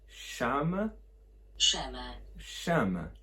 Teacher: they got rid of the FL, replaced it with a sh sound